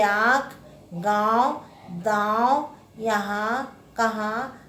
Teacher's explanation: अनुनासिक यह नासिक के वर्ण है। इसका उच्चारण नाक और गले से होता है।